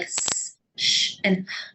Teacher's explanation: Phonemes like S, Sh, and H are voiceless, they're breath only.